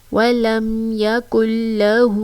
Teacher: الٹا پیش کو ایک الف کی مقدار کھینچ کر پڑھیں گے کیونکہ الٹا پیش جو ہے وہ واو مدہ کے قائم مقام ہے.